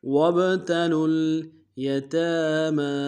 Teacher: تا کے اوپر کھڑا زبر ہے، میم کے اوپر کھڑا زبر ہے، دونوں کو ایک مقدار میں کھینچیں گے